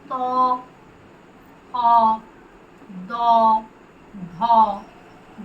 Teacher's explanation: আমরা নাড়াতে পারি শুধুমাত্র নিচের চোখটা, এবং আমাদের জিভ এসে স্পর্শ করে উপরের দাঁতের পাটির সামনে পিছনের অংশ। উপরের দাঁতের যে পাটি তার পিছনের অংশে জিভ স্পর্শ করলে উচ্চারিত হয় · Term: দন্ত বর্ণ